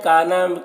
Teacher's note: وما میں الف مدہ ہے، کانا میں بھی الف مدہ ہے، دونوں کو ایک الف کے برابر کھینچیں گے